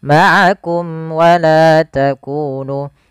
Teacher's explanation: harus dibaca dengan jelas suara mimnya dan tidak boleh ditahan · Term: izhar syafawi